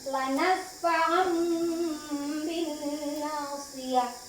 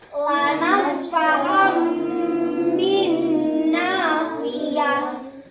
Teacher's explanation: Contohnya ini ya, ini tanwin fathatain ini bertemu dengan huruf ba, maka ini fathatainnya berubah menjadi mim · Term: iqlab